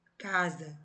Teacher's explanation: Casa, escrita com S. Quando eu pronuncio, tem som de Z.